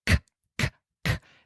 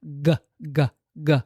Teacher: And it's just resting there as the back of the tongue rolls a teeny tiny bit back and up, hits your soft palate up there to produce the g, g, g, or the t, or I'm sorry, the k, k, k. The K and the G are made motorically exactly the same spot. The tongue has to do the same thing.